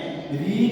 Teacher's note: री जो है हमारा वह मूर्धन्य ध्वनि है।